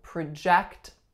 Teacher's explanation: my second syllable here is the strongest